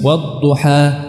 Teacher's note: menghentikannya bukan dengan menutup pita suara